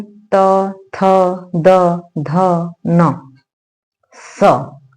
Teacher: बिना दांत के इस्तेमाल के ये बोला ही नहीं जाएगा। जब तक जीवा हमारी दंत को नहीं टच करेगी तब तक हम इन वर्णों का उच्चारण ढंग से कर ही नहीं पाएंगे। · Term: दंत्य वर्ण